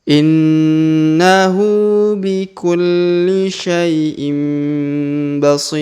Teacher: Huruf si kita panjangkan 2, 4, atau 6 harokat. Karena di depan huruf si terdapat ya sukun sebelum huruf pemberhentian. Dan huruf pemberhentian huruf ru atau run di sini kita sukunkan atau kita matikan.